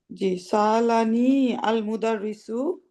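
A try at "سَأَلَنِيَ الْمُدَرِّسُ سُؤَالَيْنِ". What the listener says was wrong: সুয়ালাইন, মিলিয়ে পড়লে সালানিয়া, ফাতা দিয়ে মিলাতে হবে, সালানিয়াল মুদারিসু সুয়ালাইনি।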